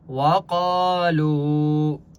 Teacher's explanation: وقالوا، وقا الف مدہ ہے، قاف کو ایک الف کی مقدار کھینچ کر پڑھیں گے، اور قاف مستعلیہ میں سے اس لیے قاف کو موٹا پڑھیں گے۔ لو واو مدہ ہے، لام کو بھی ایک الف کی مقدار کھینچ کر پڑھیں گے